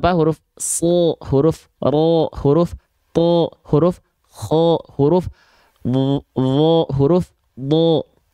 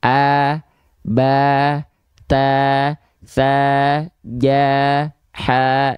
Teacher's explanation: Kalau huruf tebal ketika dia berharokat fathah, bunyi vokalnya tidak akan vokal A, tapi akan condong ke vokal O.